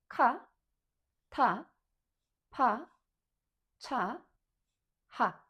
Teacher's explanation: So we're developing the sound from the basic one to strong one, blowing the air out of our mouth, stronger, sharper, with burst of air.